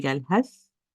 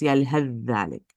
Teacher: when stopping on tha, in the following phrase, the idgham between the tha and the dhal will be prevented. So if you say yalhath, that's, the idgham is prevented.